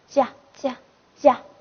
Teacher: 那么它的发音部位也就是舌面前